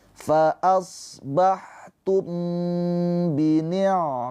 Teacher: Ikhfa syafawi dibaca. Cara bacanya mimnya ditahan dua harakat.